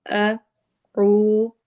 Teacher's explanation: واؤ پہ واؤ مدہ ہو رہی ہے، یعنی اس کو ہم نے 2 حرکہ لمبا کرنا ہے